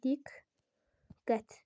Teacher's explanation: birincisi k kimi, digəri q kimi, yəni diqqət, belə olur.